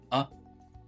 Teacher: in the word about, the A isolated there sounds like a schwa